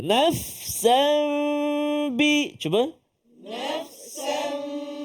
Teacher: Jadi hati-hati supaya dengung kita tu jelas, 2 harakat.